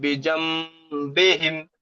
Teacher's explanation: নুন সাকিনকে মি পরিবর্তন করেন নুন সাকিনের পরে বা এসছে >> নুন সাকিনের পরে বা এসছে তাই নুন সাকিনকে মিম দ্বারা পরিবর্তন করে একলি গুন্না করে পড়তে হয় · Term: ইকলাব